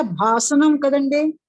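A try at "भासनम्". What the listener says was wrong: భాషణం, భాషణం కాదు. ఓకే అండి, మీకు ఉచ్చారణ అలా వినిపించవచ్చు. మూర్ధన్య శకారం, దంత శకారం.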